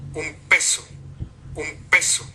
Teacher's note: Es el momento en que se cierran los labios y se mantiene por un instante el paso del aire cerrado. De hecho, si lo medimos aquí podemos ver que dura 190 milisegundos, un espacio muy breve de tiempo, un lapso de tiempo muy breve. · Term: la oclusiva